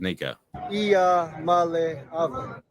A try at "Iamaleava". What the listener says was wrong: I think you might have an extra vowel, though.